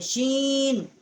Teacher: سین کا جو مخرج ہے یہ بھی ثنایا سفلا کا کنارہ جب زبان کا سوا جو ہے اسے ٹکر کھاتا ہے تو اس سے سین جو ہے وہ ادا ہوتی ہے. اور شین جو ہے یہ واسطے زبان اور اوپر کا تالو جو ہے وہاں سے اس کا مخرج ہے